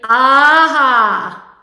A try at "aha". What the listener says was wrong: Okay, you don't need to scrunch your nose, okay? yes, it's if you take your finger and actually tap your hard palate, go, aha.